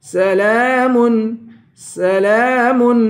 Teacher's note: لام کو ایک الف کی مقدار کھینچ کے پڑھیں گے. سلام، یہاں غنہ نہیں کریں گے.